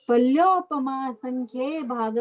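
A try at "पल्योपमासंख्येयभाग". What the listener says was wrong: पल्योपमा संख्ये भाग है, पल्योपम संख्ये भाग बोलने से गलत हो गया। आपने भी बोला पल्योपम संख्ये भाग, ये गलत हो गया।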